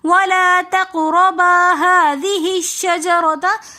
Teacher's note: هذه الشجرة میں جو ہا ہے اس کو شجرہ کے جیم کے ساتھ ملا کر پڑھیں گے، حمزۃ الوصل درمیانے کلام میں آنے کی وجہ سے گر جائے گا۔